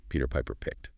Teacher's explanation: listen for the rhythm. Peter Piper picked. Those words get the stress.